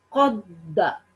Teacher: قاف قلقلہ ٹھیک پڑھیں گے، موٹا پڑھیں گے